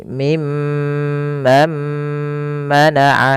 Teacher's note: idgamnya dinamakan dengan idgam alghunah atau idgam ghunah, yaitu nunnya masukkan kepada huruf mim